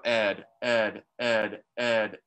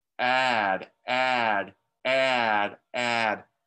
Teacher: if i go ed ed ed i cannot stick my finger between my teeth add add add add my finger can go all the way between the teeth